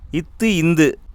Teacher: நாவின் நுனி மேல்வாய்ப்பல்லின் அடியை தொடுவதால் உருவாகிறது.